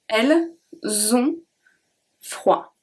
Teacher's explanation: So don't forget, you have to transfer the S to the next word and it becomes a Z sound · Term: liaison